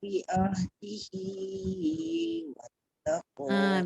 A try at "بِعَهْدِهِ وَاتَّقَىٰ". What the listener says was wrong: Bi'adihi tu jangan terlebih. Bi'ahdihi wattaqwa. 2 harakat saja.